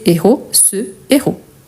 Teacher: Donc c'est pour ça que je disais qu'il y a un petit piège, car il s'agit d'un H aspiré. Je ne fais pas de liaison, par conséquent pas d'élision non plus